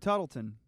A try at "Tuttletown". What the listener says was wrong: Tuttletown? There's a W in there.